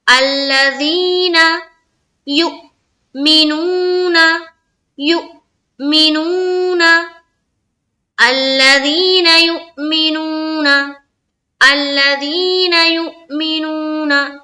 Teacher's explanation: یہاں پر جو یو ہے یہاں پر حمزہ ساکینہ کا جھٹکا دینا ہے